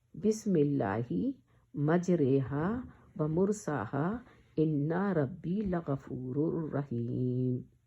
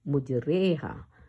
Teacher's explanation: پڑھنے میں ہمارا پروننسیشن یا تلفظ جو ہے مجہول ہو جائے گا، یعنی گر جائے گا نیچے کی طرف کو · اے کی آواز آئے گی تو مجریہا کا پڑھا جائے گا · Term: حکم امالا, امالا